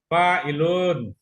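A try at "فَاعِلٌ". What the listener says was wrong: enggak panjang u-nya.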